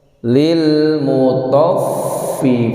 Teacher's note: ada huruf fa yang punya sifat hamas, keluar nafas